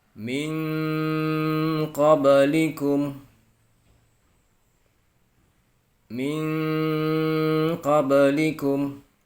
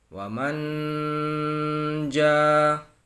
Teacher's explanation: nun mati bertemu dengan kof, maka cara bacanya ada engnya, ming. Sedangkan yang nun mati bertemu jim tadi tidak ada engnya.